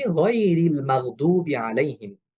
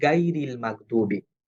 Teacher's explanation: গইন যেহেতু মোটা হরফ এই সাউন্ডটা হবে অ সাউন্ডে, এইজন্য গয়রিল হবে, গাইরিল হবে না।